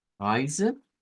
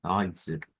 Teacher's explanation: tendríamos diptongo EI en el Deutsch, que sabemos que lo vamos a pronunciar con AI